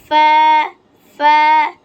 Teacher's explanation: নিচের ঠোঁটের পেট সামনের উপরের 2 দাঁতের আগার সঙ্গে লাগিয়ে, ফা। 2 দাঁতের আগা যে ঠোঁটের সঙ্গে লাগবে, ফা।